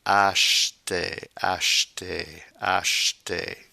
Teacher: Acheter, acheter. Okay, the E between the CH and the T is virtually imperceptible